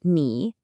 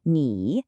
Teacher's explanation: The tone here is the third tone. It's a falling and then rising sound.